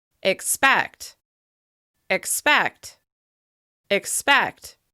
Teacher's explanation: As you can hear, the second syllable receives the most stress. This means the vowel sound in this syllable is longer, louder, and higher in pitch with extra clear mouth movement.